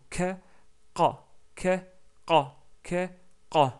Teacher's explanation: Donc c'est K et Q. Donc la langue recule un petit peu en arrière. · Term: qaf